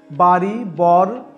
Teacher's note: র এর উচ্চারণ বাড়ি, বর শব্দের র এর মতো দন্তমূলে